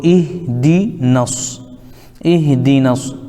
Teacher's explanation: الف لام کو نہیں پڑھیں گے، ڈائریکٹ نون کو صاد میں ملا دیں گے